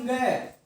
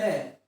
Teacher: ये अंग है इसका उच्चारण स्थान जो है वो क्या होगा वो नासिका होता है और कंठ होता है